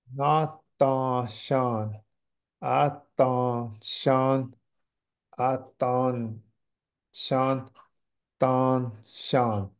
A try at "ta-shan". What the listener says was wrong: Don't forget, don't put the your tongue to the roof. You did it right the first two times.